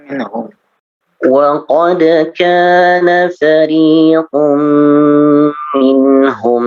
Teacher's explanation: وقد كان فريق منهم يسمعون كلام الله وقد كان فريق منهم يسمعون كلام الله. Di bagian idgham bi gunnah, fariqum minhum ditahan lagi.